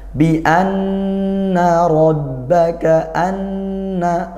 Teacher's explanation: gunah dibaca dengung seperti itu karena Nun bertasdid